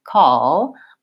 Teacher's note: the back of my tongue is staying down more in this schwa this ah position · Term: dark L